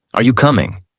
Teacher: Voice rises at the end. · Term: Natural tone